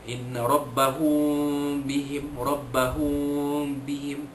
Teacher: Kenapa dia sebut syafawi? Kerana penyembunyian ikhfa itu berlaku dengan menutup kedua-dua bibir sedikit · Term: ikhfa syafawi